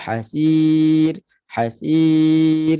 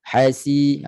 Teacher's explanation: bunyi jelas bunyi desiran Sin bunyi macam ular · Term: sifat safir